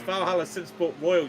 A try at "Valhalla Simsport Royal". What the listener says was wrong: Valhalla since we're royal, not whoa. It sounded like you said whoa.